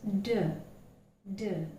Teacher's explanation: When you utter the phoneme D, the tongue is not placed exactly the same position where you placed when you utter T, but slightly backwards. It's D, D, but there is more vibration.